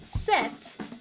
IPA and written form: sɛt (set)